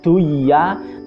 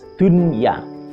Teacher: Harusnya dibaca lafadz itu duya, tapi tetap dibaca lafadznya dunya. Nah, itu karena dia dalam satu kalimat tidak bisa diidghamkan. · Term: idhar wajib